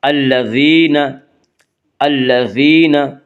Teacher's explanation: یا مدہ کو 1 الف کے برابر کھینچ کر پڑھیں گے